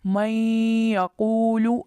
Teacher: देखें, नून साकिन के बाद हर्फ या आया जो इदगाम बिलगुन्ना वाले हरूफ में से है, इसलिए हमने यहाँ पर आवाज़ को लंबा किया, एक अलिफ के बराबर खींचा और गुन्ना किया